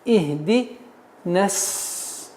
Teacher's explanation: при слитном чтении естественное удлинение аннулируется